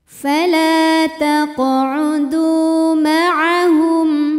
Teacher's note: taqudu maahum di sini ada hukum tajwid namanya izhar syafawi karena mim sukun menghadapi huruf selain mim dan ba di sini hurufnya adalah huruf ha maka mim sukun kita bunyikan dengan jelas